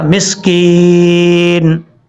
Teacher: مسکینن، وقف کریں گے تو نون ساکن ہو جائے گا، مسکین، کاف کے بعد یا مدہ ہے، ایک الف کی مقدار لمبا کر کے پڑھیں گے